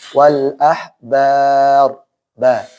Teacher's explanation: Hati-hati. Ba-nya jangan tebal.